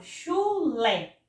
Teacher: oxítona Por exemplo quando eu falo chulé o chulé Observe aqui a sílaba Lé é a sílaba que eu pronunciei com mais intensidade com mais força é a sílaba que se Estendeu mais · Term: sílaba tônica